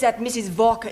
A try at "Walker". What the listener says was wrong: Walker. W is pronounced W. Your employer's name is Walker.